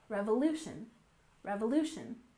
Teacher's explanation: forget that we stress the second syllable in American American and Revolution we stress the third syllable